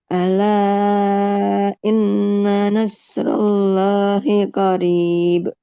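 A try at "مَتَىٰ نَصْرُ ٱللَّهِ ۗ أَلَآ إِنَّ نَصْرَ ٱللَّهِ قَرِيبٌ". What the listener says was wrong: Panjang pendeknya sedikit ya. Nah, harus lebih hati-hati lagi.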